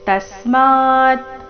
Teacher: ತಸ್ಮಾ ತ ಮೇಲೆ ಆಘಾತ, ತಸ್ಮಾ ಆದ ನಂತರ ಅರ್ಧ ತಕಾರ.